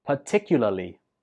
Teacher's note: stress goes on the second syllable